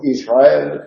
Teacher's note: Cuando la R va precedida de S sufre un reglamiento, y así cuando decimos Israel, la R no vibra